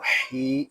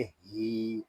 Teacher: ये हा जो है ये हल्क के नीचे वाले हिस्से से अदा होगा, इसको ही इस तरह नहीं पढ़ेंगे, इसको पढ़ेंगे ही।